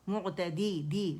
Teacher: دال کسرہ دی کے ساتھ بھی باریک ہو